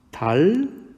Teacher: 니은 소리가 리을 소리로 바뀌었습니다. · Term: 유음화